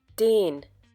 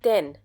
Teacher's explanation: Since den has a single N at the end, the sound of A will be longer. Den. Denn has a double N at the end.